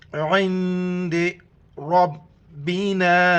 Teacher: را کو موٹا کر کے پڑھنا ہے